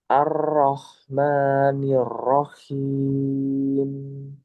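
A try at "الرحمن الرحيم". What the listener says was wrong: Dikurangi takrirnya. Ar-Rahmanir-Rahim. Jadi di ro takrirnya masih ya. Nanti dikurangi.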